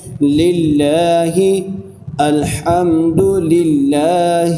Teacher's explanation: لام کو باریک کر کے پڑھ رہا ہوں